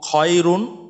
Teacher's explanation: নুনের উচ্চারণটা আসছে এবং কোনো একালিফ টানা যাবে না, তার মানে গুণা ছাড়া করলাম, স্পষ্ট করলাম